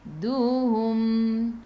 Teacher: Berhenti dengan mim, tutup mulut, rapatkan bibir.